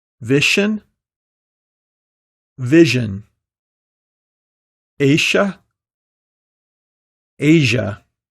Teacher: many non-native speakers devoice the zh sound. Usually, people don't realize that they pronounce the voiceless sh sound instead.